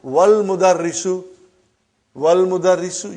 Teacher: Wal mudarrisu, you did not pronounce Hamza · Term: Hamzatul Wassal